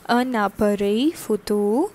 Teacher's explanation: this N and this vowel A gets connected and forms un appareil photo